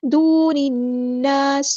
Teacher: نون پہ غنہ زمانی ہو رہا ہے، ایک الف کے برابر ہم یہاں پہ رکیں گے۔ دون الناس، الف مد آ گیا تو مد اصلی کریں گے، سین کی سیٹی ہم واضح کریں گے